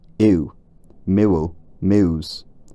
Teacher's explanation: Hume lists another separate vowel in words like mule and muse. In the south, all descriptions point to a diphthong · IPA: [ɪw]